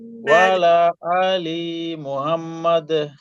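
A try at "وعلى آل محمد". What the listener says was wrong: একটু মিলাই পড়তে হবে, আলাদা আলাদা হয়ে যাচ্ছে। ওয়ালা আলি মুহাম্মাদ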